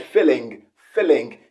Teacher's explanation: he pronounced the g at the end of the word and of course that's the mother tongue interference